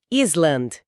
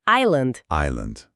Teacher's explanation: Mas, na verdade, esse S é um S fantasma, não é? O som correto é Island.